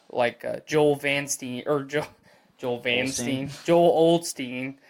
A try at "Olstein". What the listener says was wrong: Old. Olstein. Olstein, not old. You said old.